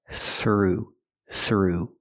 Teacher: Pronunciation, throughout, throughout. Use the TH with no voice, plus the R,